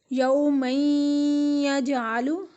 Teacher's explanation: اس میں ہم میم کو یا کے ساتھ مدغم کر رہے ہیں اور یہاں پر غنہ ادا ہو رہا ہے۔ یوم یجعل، یہاں ہم اس کو 2 سے 3 سیکنڈ کے لیے غنہ ادا کر رہے ہیں۔